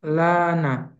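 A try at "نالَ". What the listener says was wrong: Nala, nala bukan lana, nala.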